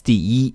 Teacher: when e comes at the end of a word it's in the first tone